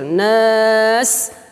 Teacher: jangan lupa untuk mengeluarkan sifat as-sofir. Nas terdengar dengan kuat